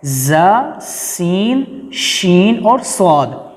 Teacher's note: یہ وہ حروف ہیں جن کو سختی کے ساتھ سیٹی کی آواز کے ساتھ ادا کیا جائے گا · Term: سیٹی والے حروف